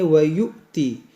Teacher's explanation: یہ حمزہ ساکنہ ہے، اس کو جھٹکا دے کر پڑھیں گے